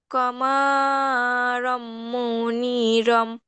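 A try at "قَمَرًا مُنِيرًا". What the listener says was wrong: কমা টান দিলে কেন? মিমে কি টান আছে? আমি বলি, খেয়াল করো, ক, ক, কমারম মনিরন। ক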